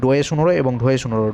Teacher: ডোয়ে শুনোরো উচ্চারণ করার সময় আমাদের জিভের মধ্যে একটা তাড়নার সৃষ্টি হচ্ছে, যার জন্য এদেরকে বলা হয় তাড়িত ব্যঞ্জন।